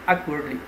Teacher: So the stress would be on the first syllable